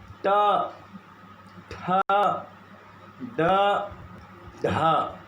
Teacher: जीभ घुमा हुआ है और जिस जगह को जीभ स्पर्श कर रहा है, तालू के पीछे और ऊपर, तालू से और ऊपर जाता है जीभ घूम कर, तो उस जगह का नाम है मूर्धा।